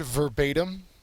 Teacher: and the second syllable is accented.